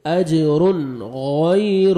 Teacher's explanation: تنوین کے بعد حروف حلقی میں سے غین آ رہا ہے, یہاں پہ اظہار کریں گے